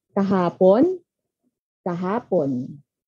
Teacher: So, ito ay bibigkasin natin ng kahapon. Nasa pangalawang pantig, ang mas mataas na tono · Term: pagpapatibay